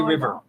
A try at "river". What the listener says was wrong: Where's your R? River. River, not river.